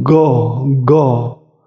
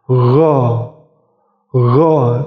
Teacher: Kalau G tertahan anginnya, tapi kalau gha anginnya mengalir. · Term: huruf ghain